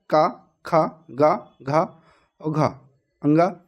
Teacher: का वर्ग के वर्ण हैं का, खा, गा, घा और घा, अंगा। इनका उच्चारण कंठ से होता है, इन्हें कंठ ध्वनियाँ भी कहते हैं